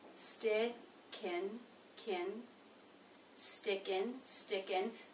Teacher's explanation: It begins with the ST consonant cluster, opens into the I as in sit vowel, sti, sti. Now the next word begins with a vowel, so the ending consonant here in the word stick will link into that